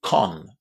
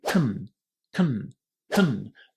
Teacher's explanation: our first syllable in this word is really, really short. You shouldn't say con.